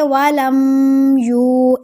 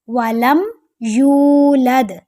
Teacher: ولم پر بالکل بھی غنہ نہیں کرنا، ٹھیک ہے؟ یہاں اظہار شفوی کا رول ہے، ولم یولد۔ آپ صرف اتنی سی بات ابھی سمجھیں کہ آپ نے یہاں غنہ نہیں کرنا، صرف جو دال ہے اس پر آپ نے کلکلا کرنا ہے اور کوئی بھی رول نہیں ہے ادھر۔